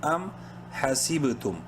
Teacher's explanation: تو یہاں پہ آپ دیکھ رہے ہیں حاسب، با چونکہ ساکن ہے اس لیے یہاں پہ قلقلہ کریں گے